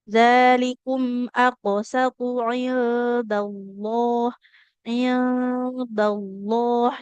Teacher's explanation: Lam di lafaz Allah itu tebal apabila huruf sebelumnya fathah atau dommah ya. Maka di sini tebal. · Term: lam tebal